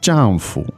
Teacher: that's fourth tone and neutral right